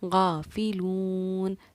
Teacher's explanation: واو ساکن سے پہلے کیونکہ پیش ہے تو واو حروف مدہ ہے، غین پر کیونکہ کھڑا زبر ہے تو حروف مدہ کی طرح ایک الف کی برابر اس کو کھینچ کر پڑھیں گے